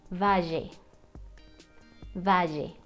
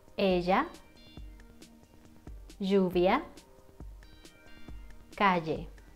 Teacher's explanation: when you have a double L in Spanish, then you cannot pronounce this like if it was just one L. You need to make the sound of the J, like in jeans